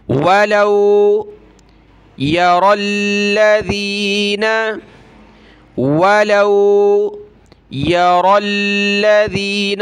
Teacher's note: را کو موٹا کریں گے، را لام کے ساتھ ملے گی، یا کو ہم نے نہیں پڑھنا